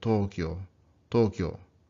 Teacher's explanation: Usually OU is often written with the long O is written with an OU or with a line over it. So Tokyo actually has two long O's, these doubled vowels.